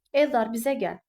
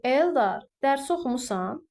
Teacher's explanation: Xitab kimi işlənəndə vurğu dərhal bir vahid əvvələ, yəni sözün və yaxud adın əvvəlinə keçmiş olur.